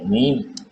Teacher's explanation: میم بھی جو ہے دونوں ہونٹ جو ہے ملیں گے تو میم ادا ہوگا